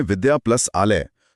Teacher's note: जब हम कहते हैं विद्या प्लस आलय तो आ और आ वर्ण मिलकर आ ही रहते हैं।